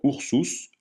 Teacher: U se prononce ou comme dans ours, jamais u comme dans perruche.